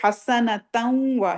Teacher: تنوین کے بعد واو آ گیا تو تا زبر واو وا، یعنی کہ اس کو تھوڑی سی نون کی آواز آئے، تھوڑی سی واو کی آئے۔ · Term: پارشل ادغام